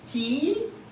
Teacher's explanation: Ó, última sílaba tônica, última sílaba, penúltima sílaba, antepenúltima. Como é a antepenúltima sílaba que é a tônica, então é uma proparoxítona.